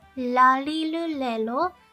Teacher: starts with the sound that feels like a combination of the english l and the r sound i want you to put your tongue on the top palette · like a combination of the english l and the r sound i want you to put your tongue on the top palette of your mouth to the place where you put your tongue when you say ta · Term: the japanese la sound